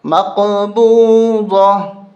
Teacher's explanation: جب بھی گول تا پہ وقف ہوگا تو ہا بن جائے گی، یعنی یہ دو نقطے ختم، اب صرف ہا رہ گئی تو یہ ہا ہی پڑھیں گے۔